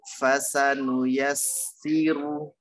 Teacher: Nah, ini ada sin tasydid masuk ya. Tekan ke sin ya.